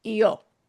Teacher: the I and the O, and we're going to punch the O more than the I